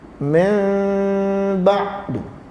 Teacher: Kalau daripada Mesir, iqlab dibaca tak rapat bibir.